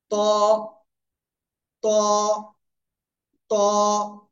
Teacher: উপরের দুই দাঁতের গোড়ায় লাগাবো, লাগিয়ে মোটা আওয়াজে পড়বো